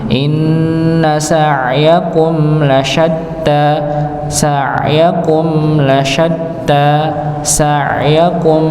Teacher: mim sukun, dia ada sedikit dengung pada huruf mim, maka jangan sampai terlihat terpotong, tapi ada aliran dan dengung yang sedikit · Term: idhar syafawi